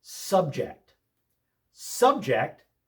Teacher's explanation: Subject with the accent on the first syllable means a topic.